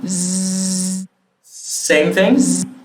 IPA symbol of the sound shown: z